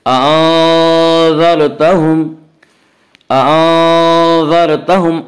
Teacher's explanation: را ساکن سے پہلے زبر ہے اس لیے را کو پر پڑھیں گے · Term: را پر